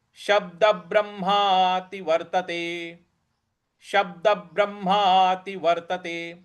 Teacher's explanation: द के आगे भी जो ब है उस पे भी हमको आघात देना है।